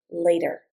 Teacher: It's hard for us to go from from voiced to voiceless and then back again. So unless we want to emphasize the T, we just reduce the T to a D